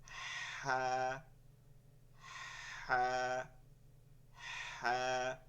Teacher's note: এই রকম উচ্চারণটা বের করতে হবে আগে বাতাসটা, এরপরে হা বলতে হবে। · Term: লম্বা হা